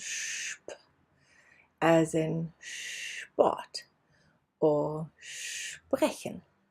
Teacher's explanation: SP is pronounced as if there was an H in between